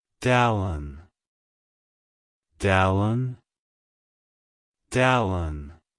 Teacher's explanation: To pronounce it correctly, emphasize the first syllable, Dale, and then the second syllable, un.